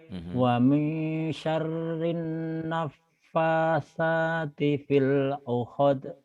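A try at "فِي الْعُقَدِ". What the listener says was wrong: uqad jangan uhad uqad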